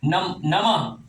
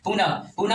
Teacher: नमः में दोनों ऊपर नीचे बिंदु है, पर होकार का ध्वनि सुनाई पड़े। विसर्ग में ये विसर्ग जो चिन्ह लगता है इसमें होकार की ध्वनि सुनाई पड़ता है। पुनः, पुनः में भी होकार का ध्वनि सुनाई पड़ता है।